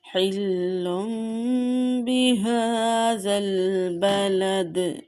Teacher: نون تنوین کے بعد با آیا ہے، اس لیے نون تنوین کو میم سے بدل دیں گے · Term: اقلاب